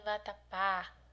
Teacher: a sílaba mais forte é a última, oxítona